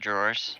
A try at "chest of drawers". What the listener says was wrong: Chest of drawers, not Chester drawers.